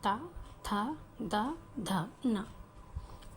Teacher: जो त वर्ग है वह तालु से बोला जाता है। दांत के बिल्कुल नजदीकी के भाग से बोला जाता है।